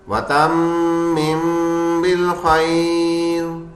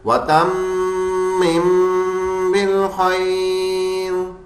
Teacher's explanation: تم میم پہ تشدید ہے اس لیے غنہ کریں گے